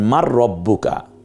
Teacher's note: জজমওয়ালা হরফের পরে তাসদিদওয়ালা হরফ আসলে জজমওয়ালা হরফটি উচ্চারিত হবে না